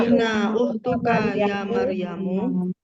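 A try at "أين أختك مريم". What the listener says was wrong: Oh, nggak ada iyanya Bu. Nggak ya Maryamu, tapi langsung ukhtuka Maryamu gitu ya. Aina ukhtuka Maryamu.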